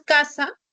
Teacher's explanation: es el sonido de la oclusiva velar sorda